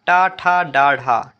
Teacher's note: तो फ्रेंड्स टा, ठा, डा और ढा ये हमारी हिंदी की मूर्धन्य ध्वनियां हैं।